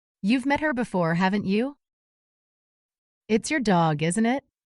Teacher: Rising intonation for genuine uncertainty